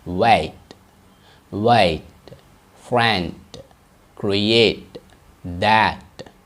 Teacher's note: ரெண்டாவது டி sounds stop டி அப்படின்னாங்க. Sound வந்து ரொம்ப ஷார்ட்டாக இருக்கும்.